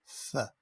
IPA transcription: θ